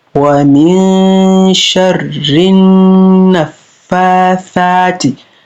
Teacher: wa min sharrin naffathati, nan za mu lura da shi nunun mushaddada ne wajen nunun ɗin nan, ba a sake shi da wuri, ana ɗan riƙewa ana gunna